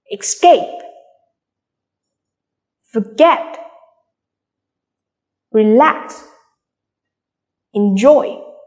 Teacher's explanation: all of these words are stressed on the second syllable